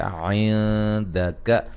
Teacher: نی لی کو ایک الف کی مقدار کے برابر لمبا کریں گے، یا مدہ ہے. عندک، نون ساکن کا باریک اخفا ہے